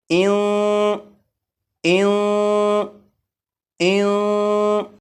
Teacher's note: गुन्ना इस तरह करेंगे कि ज़बान तालू से ना लगे, जैसे इन इन इन।